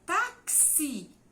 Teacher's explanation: Táxi, eu vou ter o T-A-X-I. Mas quando eu falo, o som não é um de X. O som é de XI. É o K com um S mais um I.